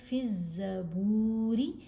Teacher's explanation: الف اور لام دونوں یہاں پر جو حروف ہیں یہ سائلنٹ ہیں کیونکہ زا حروف شمسی میں سے ہے، حروف شمسی سے پہلے جب الف اور لام 2 حروف اکٹھے آ جائیں تو دونوں ہی خاموش رہتے ہیں، سائلنٹ رہتے ہیں۔ را کے نیچے زیر ہے، را کو باریک پڑھیں گے